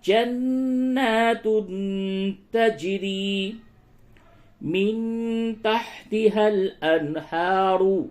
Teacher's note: نون مشدد ہے غنہ کریں